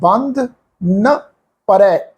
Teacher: ਨਨਾ ਅਖਰ ਬੰਧ ਸ਼ਬਦ ਦੇ ਨਾਲ ਮਿਲ ਕੇ ਬੰਧਨ ਸ਼ਬਦ ਵਾਂਗੂ ਪ੍ਰਨਾਸ ਨਹੀਂ ਹੋਣਾ